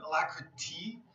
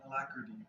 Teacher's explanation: You can say the T more like a T sound, alacrity, but a lot of times we'll say it with like a D sound